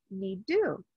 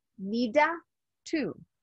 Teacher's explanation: the D and T are similar sounds you can skip one of the D or t sounds need to or need do don't say it like needa to